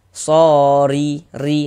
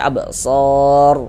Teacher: Huruf ra kan enggak dibaca panjang ya, kita sukunkan, kita matikan begitu. Sehingga kita baca absor.